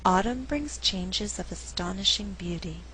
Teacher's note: The verb brings is not stressed because I want to create a good rhythm in the sentence. I alternate the stress, and what results is a rhythm like this: dun da dun, dun da dun, 1 and 2 and 3 and 4.